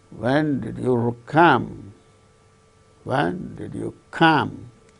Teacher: Here, come is the word that gains the falling tone.